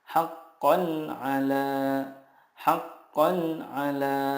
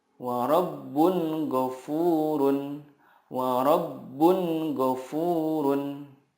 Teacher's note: Karena huruf-huruf izhar di sini makhrajnya adalah dari tenggorokan. Nah, tenggorokan bahasa Arabnya adalah halki gitu ya. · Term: izhar halki